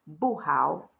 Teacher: how has the third tone the fallen and Rising tone